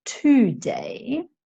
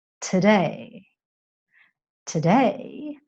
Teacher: the 'to' sound becomes very, very short, and it ends up sounding more like 't'day'